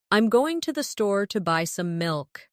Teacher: Notice how certain words are stressed. Going, store, buy, milk.